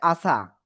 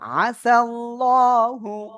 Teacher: আইন জবর গলা চেপে